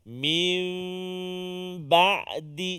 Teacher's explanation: Cara bacaannya ialah menukarkan suara huruf nun kepada huruf mim beserta dengan dengung dengan kadar 2 harakat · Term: iqlab